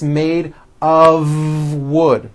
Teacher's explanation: of wood it's not a f wood with an unvoiced F it's all voiced and it's all connected